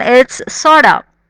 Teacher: So sort of becomes sorta.